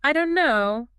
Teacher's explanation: The T sound vanishes, the vowel shortens. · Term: elision